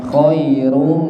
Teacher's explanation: Terus mim tasdid niku gunnah ditahan.